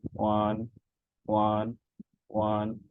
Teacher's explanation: because this is the first tone, so we will pronounce it in a straight way